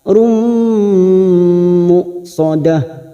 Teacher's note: Di tanwin bertemu mim idgham bi gunnah masuk dan mendengung masuk ke huruf mim dan ditahan selama 3 harakat